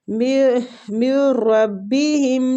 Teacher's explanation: نون ساکنہ کے بعد را آ رہا ہے، را اور لام دونوں حروف اگر آتے ہیں تو پھر ہم ادغام بلا غنہ کرتے ہیں